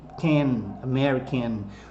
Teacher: olha o N terminando a palavrinha N, can, American, force o som nasalizado do N que a gente aprendeu no alfabeto.